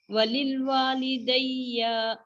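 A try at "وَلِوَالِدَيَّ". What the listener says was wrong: نہیں دیکھیں رب اغفرلی ٹھیک ہے آپ کا، ولی والدیہ یہاں پہ آپ کی مسٹیک ہوئی ہے، ولی والدیہ آپ نے ولیل والدیہ کہا. ہاں جی ایسے ہے، ولی والی لی لام سے دی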